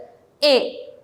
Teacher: ശരിയാണ് നാവ് കുറച്ചു പൊങ്ങും ഒക്കെയാണ് എന്നാലും ഇവയെ എന്താണ് ഉച്ചത്തിന്റെ പരിധിയിലാണ് ഉൾപ്പെടുത്തിയിട്ടുള്ളത് എ എന്ന് പറയുമ്പോൾ നാവ് ഒരുപാട് പൊങ്ങുന്നുമില്ല ഒരുപാട് താഴുന്നുമില്ല എ എന്ന് പറയുന്ന സമയത്ത് എന്താ ഒരു രണ്ടിന്റെയും ഇടയിൽ ഒരു ഒരു ഗ്യാപ്പിലാണ് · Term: മധ്യത്തിൽ നിൽക്കുന്ന ഒരു സ്വരമാണ്